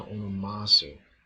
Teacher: The accent of the mu shifted back to the last syllable of onoma, which is why in the Lord's Prayer, may your name be sanctified, agiastheto, to onomasu, instead of onomasu. Su is an enclitic and loses its accent to the last syllable of onoma.